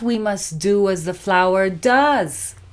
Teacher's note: we don't stress does does becomes weak